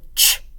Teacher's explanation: The air or the sound is channeled, but it also has a stop to it. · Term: affricate